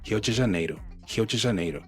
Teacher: So that R at the beginning of a word is pronounced like an H